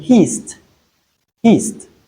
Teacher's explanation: the ed comes after s, which is a voiceless sound. So we realize it as t.